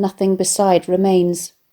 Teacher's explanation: the word nothing is a trochee with a dumb D stress pattern and this first stressed syllable